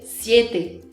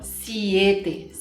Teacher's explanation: Se o I é fraco e o E é forte, eu vou passar pelo I rapidinho e vou ler siete, e não siete. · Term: vogais fortes e fracas